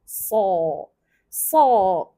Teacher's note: The tongue, the sifatul isti'la, which is later on translated to tebal, it's the tongue will be high.